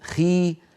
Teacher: نجد بان المكسور كميه الهواء التي تملا الفم اقل